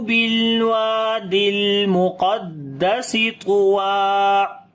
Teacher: قاف کو موٹا پڑھیں گے، طا کو بھی موٹا پڑھیں گے